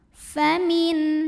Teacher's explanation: Di sini ada hukum idhar halqi karena ada nun sukun yang bertemu dengan huruf halqi atau huruf tenggorokan, yaitu huruf H. Maka nun sukun ini kita bunyikan dengan jelas, bunyi N tidak ditahan.